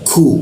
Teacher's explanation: ku di sikut tenggorokan lidahnya diturunkan sehingga dibacanya ada hembusan